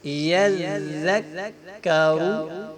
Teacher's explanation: یہاں پہ ذال کاف یہ باریک ہے اور را کو اس کے اوپر پیش ہے، ہم اس کو موٹا ادا کریں گے۔